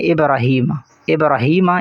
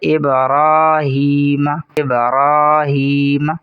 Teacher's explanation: آگے ہے ابراہیم، اکثر لوگ اسے پڑھتے ہیں ابراہیم، ابراہیم، یہ غلط ہے، را کو پر کر کے پڑھیں گے اور ایک الف کے برابر بھی کھینچیں گے، درست تلفظ ہے ابراہیم، ابراہیم۔